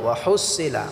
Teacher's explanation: এখানে হাটাকে আমরা গলায় চাপ দিয়ে উচ্চারণ করব